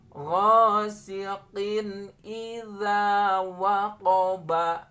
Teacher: karena tanwin bertemu dengan hamzah, maka ini wajib dibaca izhar, ya. Izhar halqi, karena memang hamzah ini dari halak tenggorokan.